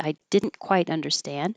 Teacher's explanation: if you keep the stress on didn't that's typical usually negative words are emphasized